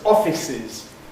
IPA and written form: ˈɒfɪsɪz (offices)